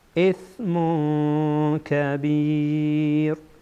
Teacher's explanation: بعد از تنوین کاف آمده، اینجا اخفا میکنیم